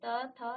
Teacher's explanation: उसका उच्चारण स्थान दांतों से आप ऊपर भी पढ़ चुके हैं। तो दांत को स्पर्श करते हुए आपकी जीभ जो है उसका उच्चारण कर रही है।